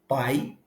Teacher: Dois Tons portanto duas vogais da mesma sílaba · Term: de tongos